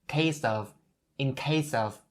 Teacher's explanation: case ends with an S sound, and you bring that S over to of